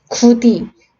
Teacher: 디귿은 치조음이기 때문에 윗 잇몸까지 와야 돼.